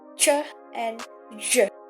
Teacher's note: a combination of a plosive and fricative manner in which sounds is produced by the blocking of air and finally releasing it through a partial passage. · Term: affricates